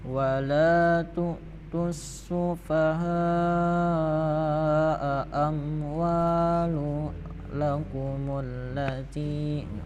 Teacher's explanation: Nah, jadi membacanya itu panjangnya harus dibaca selama 5 ketukan. Karena itu setelahnya ada hamzah dalam satu kalimat, maka membacanya itu harus dibaca panjang 5 harokat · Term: mat wajib muttasil